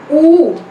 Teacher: Next one is ऊ, ऊ की बड़ी साउंड स्कूल वाली, back vowel at close position and rounded vowel. It is back rounded vowel on close position.